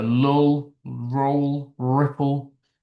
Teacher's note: uh you get lateral or liquid sounds, the more L sounds, the R sounds, the ones where the airflow goes around the tongue when we say them